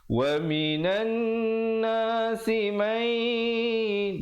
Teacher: di situ didengungkan dua harakat, nun mati bertemu ya, hukumnya idgham bi gunnah